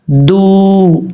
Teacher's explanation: دال کا مخرج ہے زبان کی نوک اوپر والے دانتوں کی جڑوں سے لگے تو دال پڑھا جاتا ہے۔